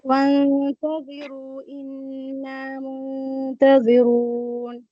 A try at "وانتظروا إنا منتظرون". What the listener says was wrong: نعم أحسنتي بارك الله فيك.